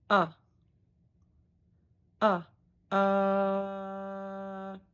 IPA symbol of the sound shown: ə